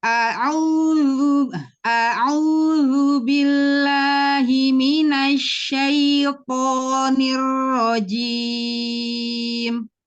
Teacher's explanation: Syai, jangan masuk hidung ya. Tadi ada tercampur hidung tapi sedikit sekali.